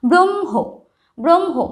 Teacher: হ আর ম যুক্ত হচ্ছে ঠিকই কিন্তু ম এর উচ্চারণটাই কিন্তু বেশি মানে ম এর প্রভাবটাই এখানে বেশি তাই ব্রহ্ম উচ্চারণটা হবে এইরকম